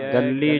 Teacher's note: ਗੱਲੀ ਪਾਠ ਜਿਹੜਾ ਕਸ ਕੇ ਅਧਿਕ ਲਾ ਕੇ ਉਚਾਰਨ ਕਰਨਾ